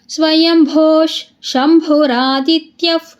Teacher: ಪುಷ್ಕರಕ್ಷೋ ಮಹಾಸ್ವನಹ ಅನಾದಿನಿಧನೋಧಾತ ವಿಧಾತಧಾತುರುತ್ತಮಹ ಈಗ ಸ್ಟಾಪ್ ಮಾಡಿಕೊಳ್ಳಿ ಸ್ವಯಂಭೋ ಭೂಮುಂದೆ ವಿಸರ್ಗ ಇದೆ ವಿಸರ್ಗದ ಮುಂದೆ ಶಿದೆ ಅದಕ್ಕೆ ಏನಾಯ್ತು ವಿಸರ್ಗ ಅಲ್ಲಿ ಅರ್ಧಶ ಆಯ್ತು